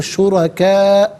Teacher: یہاں پر بھی مد متصل ہے، جس طرح قائم میں ہم نے آپ کو بتایا اسی طریقے سے اس کو کھینچ کر پڑھنا ضروری ہے. شرکاء وقف کریں گے تو شرکا پڑھیں گے